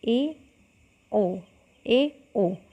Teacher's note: अर्धसंवृत में जो है मुख द्वार संवृत की तुलना में अधिक खुलता है। जो हमारा संवृत था यानी कि उसकी तुलना में जो है अधिक खुलता है।